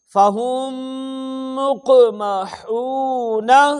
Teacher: میم ساکن کے بعد میم آنے کی وجہ سے یہاں ادغام ہوا، غنہ کر کے پڑھا ہم نے